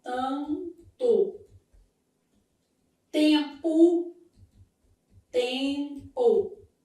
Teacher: os dígrafos vocálicos formados por vogal mais m ou n, nesse caso, m ou n, sempre com a indicação de som o quê? Nasal.